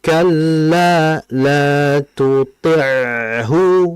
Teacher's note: Nah, tuti'hu itu harus dialirkan ainnya. Hati-hati, tuti ya, bukan tuti.